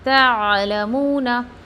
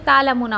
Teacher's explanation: देखिए सब पे ज़बर है, ता को आइन में मर्ज करना है, तअलमूना। अगर आप आइन नहीं निकालोगे तालमूना हो जाएगा, टोटली मिस्टेक हो जाएगी।